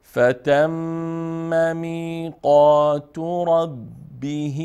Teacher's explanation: ر مفتوحه است بر خوانده ميشه